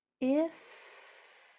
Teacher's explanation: If, that's not a TH, it's my top teeth going over my bottom lip